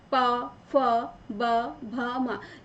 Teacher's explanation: जब हम इनको बोलते हैं तो हमारे जो होठ है, दोनों होठ आपस में स्पर्श करते हैं। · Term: ओष्ठ